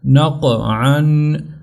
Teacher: نون زبر قاف نق، عین دو زبر عن، نق عن۔ تو دیکھیں قاف یہ موٹا حرف بھی ہے اور اس کے اوپر قلقلہ بھی ہوگا، تو ہم نے دونوں چیزیں اس کے اوپر کرنی ہے، ایک تو اس کو موٹی آواز سے پڑھنا ہے اور دوسرا اس کے اوپر قلقلہ بھی کرنا ہے۔